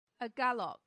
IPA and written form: əˈɡælək (agalloch)